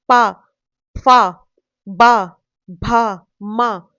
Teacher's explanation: प वर्ग जो है ये बोलता है ओष्ठ से यानी कि होठ से देखिए बोल के देखिए प आपके लिप्स लिप्स से आवाज आई ना प फ ब भ म है ना आपके जो लिफ्ट से है दोनों क्लोज आए है ना तभी तभी ये वर्ड ये वर्ड्स प्रोनाउंस हुए हैं।